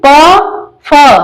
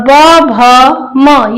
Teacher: प वर्ग में प फ अघोष और ब भ म ये सघोष के अंतर्गत आएगा